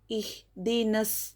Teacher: یہاں پر دیکھیے الف اور لام حرف شمسی کے شروع میں ہو تو الف اور لام کو نہیں پڑھیں گے بلکہ نون کو سواد سے ملا کر پڑھیں گے